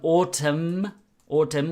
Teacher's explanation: we don't pronounce the N